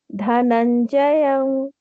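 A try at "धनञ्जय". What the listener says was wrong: Not dhanam, ma'am. It's na.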